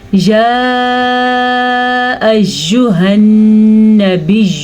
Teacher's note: یہ مد 3 سے 4 حرکات عربیہ کے برابر ہے اور 2 سے 3 سیکنڈ کے لیے اس کو لمبا کیا جاتا ہے۔ اگر اس مد کی ادائیگی میں ہم نے تھوڑی بہت کمی بیشی کی تو ٹھیک ہے، لیکن اگر زیادہ کمی بیشی کریں گے تو پھر اس سے ہمارا سبق غلط ہو جائے گا۔